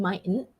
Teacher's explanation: it might be a silent t it's a glottal one